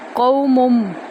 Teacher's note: میم کو میم میں داخل کریں گے غنہ کے ساتھ